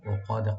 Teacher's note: ফিল ওকাদে, ওকাদে কাফটাকে এখানে right দিবেন, আর দালে কলকলা করতে হবে ওয়াকফের সময়